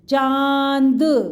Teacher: Mouth जाएगा और नोज से आवाज़ आएगी चांद, इसलिए हमने इसमें चंदा की बिंदी लगाई है, चंद्र बिंदु अनुनासिक की मात्रा लगाई है।